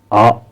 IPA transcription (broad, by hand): ɑ: